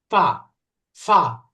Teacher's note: ওই ফা যেটা বললে ফা, এটা ওই যে ইংলিশে ব্রিটিশ অ্যাকসেন্ট বা আমেরিকান অ্যাকসেন্টে পি এর উচ্চারণ হয়, তাই না? এই ফা, আরবি যে ফা পারফেক্টলি বলতে চাইলে উপরের দাঁতের আগা নিচের ঠোঁটের মাঝখানে স্পর্শ করতে হবে, ফা ফা। অন্যথায় দেখেন এটার উচ্চারণ হবেই না, ফা হবে।